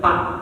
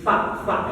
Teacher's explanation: kalau Pa itu bibir dengan bibir tapi kalau Fa bibir dengan gigi seri bagian atas